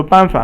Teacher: 办 is fourth tone, and again, 法 is third tone. So falling tone, and then kind of falling and rising tone.